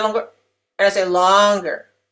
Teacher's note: the peak vowel of the word is longer in duration. It takes longer to say it.